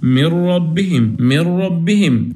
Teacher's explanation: هنحذف النون تماما وهنحذف كمان الغنة المصاحبة للنون، وهنتقل من قراءة الميم للراء مباشرة